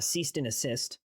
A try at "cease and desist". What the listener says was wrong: You said ceased and assist.